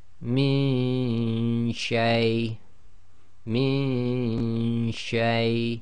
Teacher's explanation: Okay, and you've got to do the ghunna and effectively the ghunna of the noon in your nose, but you cannot have the tongue in the articulation place of the noon sakin. It must already be in the correct place to be ready to say the sheen.